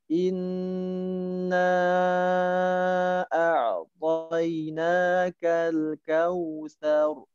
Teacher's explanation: Di ayat pertama pada inna, kata innanya Jangan tergesa-gesa, santai, dibaca panjang, 4 sampai 5 harokat.